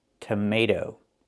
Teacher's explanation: That second t changes to a fast d.